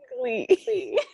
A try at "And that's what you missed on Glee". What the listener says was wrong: You say it so slowly. There's just a delay. Just say it normal. Just say it like at a regular pace.